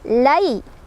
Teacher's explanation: ada harf lin, karena ada fathah bertemu ya sukun, dibacanya lunak.